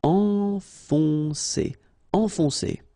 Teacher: Enfoncer, okay, so it can be quite tricky at the beginning because if you look carefully, first you've got this nasal, en, and after that you've got another on